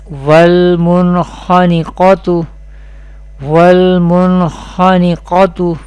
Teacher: qaf from mustaliya letter will be pronounced with heavy voice or thicker voice in every condition